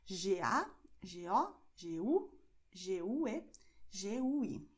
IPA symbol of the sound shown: g